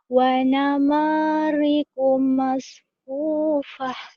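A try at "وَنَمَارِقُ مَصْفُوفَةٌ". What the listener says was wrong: Suaranya jangan kayak mupet. Wanana, wanana. Jangan digituin. Digedein. Wanama.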